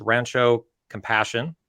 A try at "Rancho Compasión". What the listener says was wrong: Rancho Compasión. Yeah, it's like compassion with one S, and it's in Spanish.